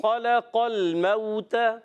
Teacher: قاف موٹا رکھنا ہے، خا بھی لام باریک کرنا ہے۔